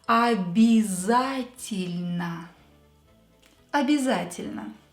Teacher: O will become A. Я will become И, and Е will become И.